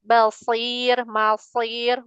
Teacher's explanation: Huruf shadnya tebalin lagi biar enggak kecampur sama seperti huruf sin.